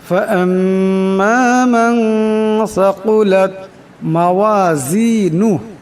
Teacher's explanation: পরিমাণ ইকফার গুণনা করিয়া পড়তে হবে সাকুলাত এখানে সা আছে সার আওয়াজটাকে অবশ্যই নরম করিয়া পড়বেন এরপর কাফ আসছে বড় কাফ আওয়াজটা মোটা করিয়া পড়তে হবে